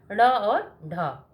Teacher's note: जिनके उच्चारण में जिह्वा अग्र मूर्धा का स्पर्श करके झटके से खुलती है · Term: उच्छिष्ट व्यंजन